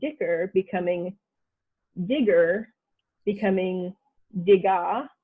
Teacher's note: that ck in some northern dialects i guess sometimes changes over time to like a g sound